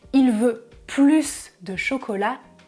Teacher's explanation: si vous prononcez le S du mot plus, alors votre phrase a un sens positif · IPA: [plys]